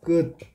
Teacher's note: 끝을 발음하면 표기는 티읕이지만 발음은 디귿으로 발음 되지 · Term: 음절의 끝소리 규칙